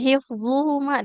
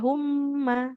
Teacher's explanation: kayak hifzuhuma di situ kan mimnya tidak bertasydid ya, nggak boleh humma